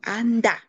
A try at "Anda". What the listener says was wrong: ce qui t'embrouille, c'est que tu n'isoles même pas les tons.